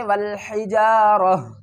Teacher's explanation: جب بھی یہ گول تا پر ہم وقف کریں گے تو تا کو ڈراپ کر دیں گے اور ہا کو پڑھیں گے